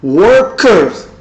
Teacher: R at the end of a word becomes weak A, shorter A. Worker. R at the end of the word becomes A, and R before the consonant becomes longer A, so it becomes worker.